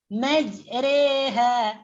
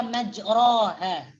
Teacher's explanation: mencondongkan bacaan fathah kepada kasrah atau alif kepada ya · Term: imalah kubra